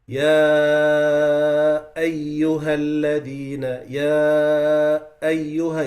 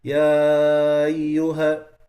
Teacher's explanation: you see how I'm making the hamza clear?